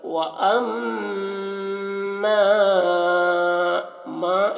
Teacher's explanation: میم مشدد ہے تو میم میں غنہ کریں گے، اور مد ہے تو کھینچیں گے